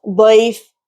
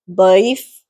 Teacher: For example, this is daif. So here ya sakin has a fatha preceding it, so it's read softly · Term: layyina